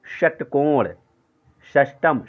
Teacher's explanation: जैसे 'षट्कोण' या 'षष्ठम' (छठा) में, जीभ अंदर की ओर मुड़कर 'U' आकार बनाती है। यानी, यह यू-टर्न लेता है। · ये श मूर्धन्य श जो होता है, जैसे षटकोण, षष्टम श, यानी जीभ जो है कि यू के आकार में, अंदर यू के आकार में मुड़ता है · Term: मस्तिष्कीय 'शा'